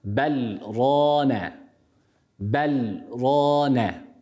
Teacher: var istisnai bir durum var o da nedir burada sektenin olmasıdır burada biz sekte yaptığımız için buradaki lamı ne yapıyoruz rayya katmadan okuyoruz idgam yapmıyoruz